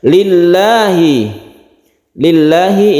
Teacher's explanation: lafzul jalalah yang didahului dengan kasroh, maka membacanya itu tarqiq atau tipis